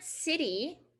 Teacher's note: tongue comes up and makes contact with the hard palate right behind your top front teeth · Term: flap t